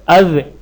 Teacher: اذ کہنے سے زبان کی نوک ثنا یا علیہ کی جڑ سے لگ کر ٹھہرتی ہے، جو کہ دال کا مخرج ہے۔